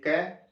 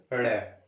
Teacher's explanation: क ग और ड़ में वायु कम निकल रही है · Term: अल्प प्राण